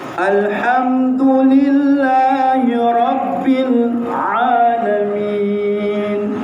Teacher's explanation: Kaedah huruf ain sempitkan kita punya kerongkong saja. Macam dikasih jepit kita punya leher.